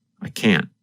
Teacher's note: in the negative form because the tongue and voice stop there is almost no sound of the letter N